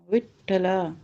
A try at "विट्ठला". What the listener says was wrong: ठा में 2 ठा का उच्चारण हो रहा है या ट ठ का उच्चारण हो रहा है? अनुपूर्वी क्या बन रही है? विट्ठ अथवा